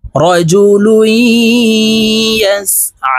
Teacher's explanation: এই আইনকে এক আলিফ টেনে পড়তে হবে